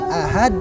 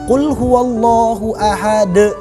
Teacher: Adapun kesalahan yang kedua adalah seringkali mereka ini pada saat mengucapkan huruf qalqalah ada seakan-akan hamzah di belakangnya, padahal salah. Yang benar adalah itu pantulan biasa, bukan ditambah hamzah.